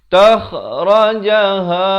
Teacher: Kha ni di hujung kerongkong makhrajnya. Takhrajaha, ha di pangkal kerongkong.